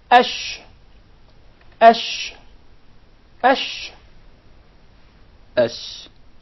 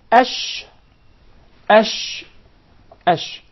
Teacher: So the sheen is articulated from the middle of the tongue and what lies opposite to it from the upper palate or the roof of the mouth.